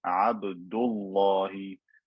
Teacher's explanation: Make the lam in lafzul jalala fat عن فتح أو ضم if before it there is a fatha or a dhamma ka, like in the word Abdullahi. So this dhamma before the word Allah made the lam fat.